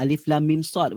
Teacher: Alif lam ada dengung sebab jumpa mim. Mim ke sad tak ada dengung